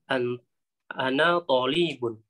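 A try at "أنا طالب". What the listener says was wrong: Li-nya tidak boleh panjang. Tidak boleh panjang li-nya.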